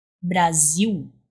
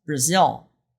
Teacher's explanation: This sound is an U sound, not an L sound.